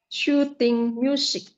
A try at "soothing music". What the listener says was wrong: No shoot. Okay, there is no H. So it's going to be like soothing music. Soothing.